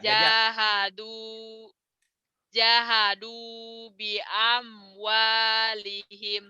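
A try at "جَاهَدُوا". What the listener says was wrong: Ja-nya panjang, du-nya panjang lagi. Jahadu bi amwalihim.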